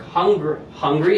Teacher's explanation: it starts low and it goes up